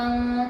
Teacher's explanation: یہاں پر آواز کو چھپانا ہے کیونکہ یہاں پر یہ اخفا کا حروف ہے، یہ اخفا ہے، یعنی اخفا کے 15 حروف میں سے شین ہے.